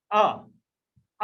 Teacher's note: मध्य स्वर, आप बोलो आ, यदि आप बोलोगे तो आपके जीभ का बीच वाला भाग क्रियाशील रहता है।